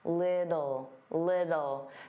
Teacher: native speakers, including me, generally pronounce the T's as soft D's. Little, little.